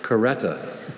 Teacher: There's also a schwa, that first vowel.